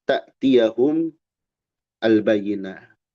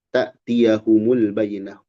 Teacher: Mu dibaca mu untuk mempermudah karena bertemu dua sukun